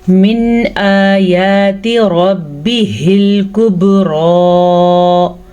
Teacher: نون ساکن کو ظاہر کر کے پڑھیں گے، نہ تو اخفا اور نہ ہی غنہ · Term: اظہار